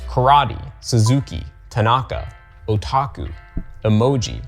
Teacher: on low you continue on high and the finish on low so it's low high low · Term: Nakadaka